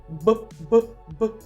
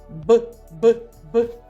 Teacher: горло так горло працювало тож звук Б дзвінкий